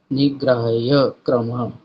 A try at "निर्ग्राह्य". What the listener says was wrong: नि, नहीं बोलना आपने, निर है वो, निर्ग्राह्य